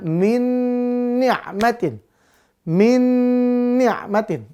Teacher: Walaupun sama-sama nun, tetap dia dibaca idgham biguna. Berarti masuk langsung lebur ke huruf nun yang kedua. Dengan dengung.